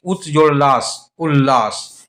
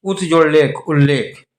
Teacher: जब त का मेल ल के साथ होता है तब ल में बदल जाता है